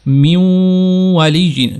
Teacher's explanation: واو کی آواز کو ہم نے تھوڑا ٹائم کے لیے جاری رکھا، میوں والی جین، تو یہ جو ہم نے جاری رکھا اس کو کہتے ہیں غنہ۔